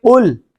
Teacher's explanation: اس میں تھوڑا سا مخرج میں فرق یہ ہے کہ جو نقطوں والا قاف ہے یہ موٹا ہے، اس میں زبان کی بالکل آخری جڑ جو ہے، آخری حصہ، وہ اوپر تالو کے ساتھ لگتا ہے اور موٹا ہوتا ہے